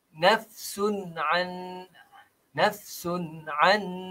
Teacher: Ini tanwin baris dua di hadapan bertemu dengan huruf ain. Yang ini tak perlu pada dengung.